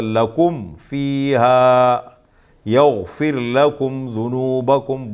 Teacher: تیسرا قاعدہ، میم ساکن کے بعد میم کے علاوہ اور با کے علاوہ کوئی اور حرف آ جائے، کوئی بھی حرف آ جائے، میم کے علاوہ اور با کے علاوہ کوئی بھی حرف آ جائے تو وہاں اظہار ہوگا، یعنی اس میم ساکن کو خوب ظاہر کر کے پڑھیں گے، غنہ نہیں کریں گے، ناک میں آواز نہیں چھپائیں گے، اور اس کو کہتے ہیں اظہاری شفوی۔